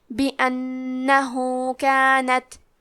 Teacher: یہاں حکم ہے مد صلہ صغرا تو ہم اپنی آواز 2 مد کے برابر لمبی کریں گے